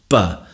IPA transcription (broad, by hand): { b }